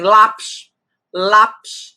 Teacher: paroxítona e aqui tem a penúltima sílaba tônica